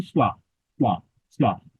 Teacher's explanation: দুইটা ঠোঁটকে টাচ না করে ওয়া